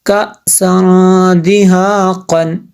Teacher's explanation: حمزہ ساکنہ ہے تو اس کو جھٹکا دیں گے